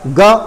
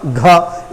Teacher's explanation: गा बोलते समय वायु कम निकल रही है, जबकि घा बोलते समय वायु ज्यादा निकल रही है